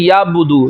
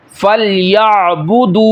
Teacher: یعنی حمزہ پڑھتے ہیں عین کو چھوڑ دیتے ہیں، یعنی عین پڑھتے ہی نہیں ہے، چینج کر دیتے ہیں حمزہ میں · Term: لحن جلی